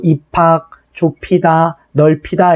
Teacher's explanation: 비읍과 히읗이 더해져서 전부 다 피읕이 됐다는 걸 알 수가 있습니다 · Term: 자음 축약